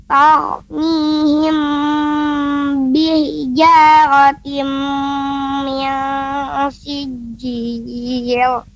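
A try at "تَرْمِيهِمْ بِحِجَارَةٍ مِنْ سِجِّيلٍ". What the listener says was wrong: Tadi pengucapan tar, ya, tar, mihim, kemudian sijil, tidak tebal. Lamnya sijil, nah, tidak, tapi tipis. Sijil. Tar, mihim.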